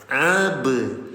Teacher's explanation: Nol harokat, nggak ditahan, hanya dipantulkan saja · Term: qalqalah